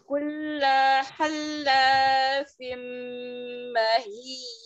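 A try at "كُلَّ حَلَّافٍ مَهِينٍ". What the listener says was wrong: Lanya jangan yang kulla, lanya jangan diseret ya Umi. Satu harokat saja. Kulla halla fimmahin.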